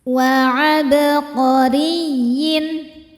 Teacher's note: Huruf ra dibaca tarqiq karena berharokat di bawah yaitu kasrah, maka bacanya tipis.